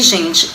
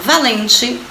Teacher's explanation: Escrevemos com TE no final. Mas na hora que nós pronunciamos, a gente ouve o som de I. Então, valente se escreve com E no final.